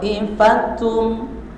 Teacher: Contoh, asalnya dibacanya ta'ifatun minkum asalnya, maka masukkan tanwinnya ke mim jadi ta'ifatum, baru didengungkan, sertai dengan dengung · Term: idgham bigunna